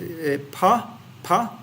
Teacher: the air flow is modified by constricting the lower lip and the upper lip it's simply lip based you modify the air by your lips